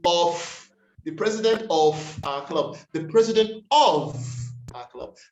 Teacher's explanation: that f turns into a v when it comes to pronunciation